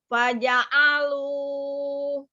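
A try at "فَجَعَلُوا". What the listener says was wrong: Hanya jangan ngangkat alu, itu jangan diangkat. Karena huruf ain itu sifatnya dia tengah-tengah ya, tidak terlalu ditekan, tidak juga terlalu dilepas. Faja'alu.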